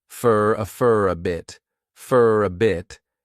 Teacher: Many native speakers will combine all three of these together and they'll pronounce for as more of an unstressed fur, fur a bit, and again, that flat T on bit.